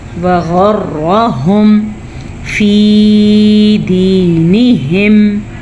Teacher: را کو اس لیے پر پڑھنا ہے کیونکہ را کے اوپر زبر ہے